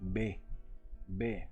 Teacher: el sonido para pronunciar esta letra B lo producimos juntando ambos labios en la boca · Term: B labial